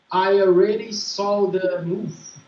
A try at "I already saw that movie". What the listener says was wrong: That movie. But don't say move. It's movie. I already saw that movie. I already saw that movie.